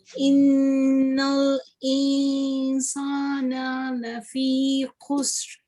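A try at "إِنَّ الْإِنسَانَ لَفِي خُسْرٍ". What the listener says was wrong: Okay, it's almost good, almost 100% good. You just need to make the ikhfa more obvious like this. Innal insana lafi khusr.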